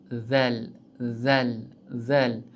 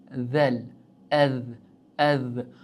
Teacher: Xuddi shunaqa z deganingizda tilimizdan uchi yuqori old tishning uchiga tegadi. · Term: zal harfi